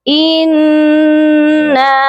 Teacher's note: پہلے اس نون مشدد پر ہم غنہ کریں گے کیونکہ نون مشدد پر ہمیشہ غنہ ہوتا ہے، اس کے بعد نون کے ساتھ الف ہے، اسی لیے اس نون کو ایک الف کے برابر لمبا بھی کر کے پڑھا جائے گا۔